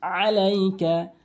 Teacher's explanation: আই এনে হলকের মাঝখান থেকে উচ্চারণ করতে হবে